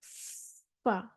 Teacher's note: नीचे वाले होंठ का शिकम, तरी वाला हिस्सा यानी कि और सनाया उलिया का किनारा। सनाया उलिया जो है हमारे ऊपर वाले जो 2 दाँत हैं, वो नीचे वाले होंठ के गीले हिस्से को टच होते हैं।